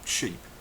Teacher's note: sh sound heard at the start of the word sheep here we curl the edges of the tongue to touch the upper teeth and purse the lips